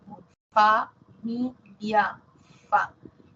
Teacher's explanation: Labio dental, labio inferior, dientes superiores.